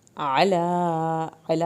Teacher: عین کو حلق سے پڑھنا ہے، لام کی کھڑی زبر پڑھنی ہے